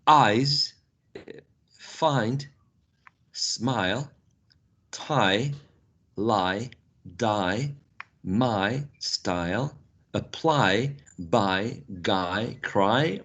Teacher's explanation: If you consciously imagine or feel what your tongue is moving, what your tongue is doing, your tongue actually is moving from a low position towards a high position, right? And a little bit forward and a little bit to the front, okay? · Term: diphthong I